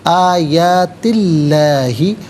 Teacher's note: من آیاتی اللہ، آیاتی میں تا کے نیچے زیر ہے، اسے اسم اللہ کی حرف لام کے ساتھ ملائیں گے، درمیان میں سے الف یعنی حمزہ کو حذف کریں گے۔ اسم اللہ کے حرف لام سے پہلے والے حرف تا کے نیچے زیر ہے تو اسم اللہ کے حرف لام کو باریک پڑھیں گے، زبر یا پیش ہو تو پر کر کے پڑھا جاتا ہے۔